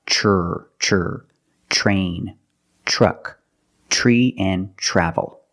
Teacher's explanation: When you have tr together in any situation, you can pronounce it tur, but usually we don't. We pronounce it ch plus the r sound. Ch. Example, train, truck, tree, and travel.